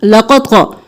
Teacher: क़ाफ़ को क़ा को मोटा करना है, लक़त क़ा, हरकत को जल्दी से।